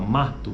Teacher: E aqui ele está dizendo que a vogal tônica, nesse caso, é a vogal A, que vem logo depois de M. Então, ma, esse A é a vogal tônica, a mais forte. Existe um esforço ou um movimento de força muscular, né, intensificado, né, nesta sílaba, mato.